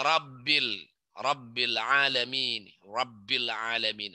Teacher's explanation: getaran lidahnya nggak banyak-banyak